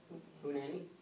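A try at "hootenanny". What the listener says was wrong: Ooh, hoot nanny. Not acceptable. Sorry, you left out a syllable.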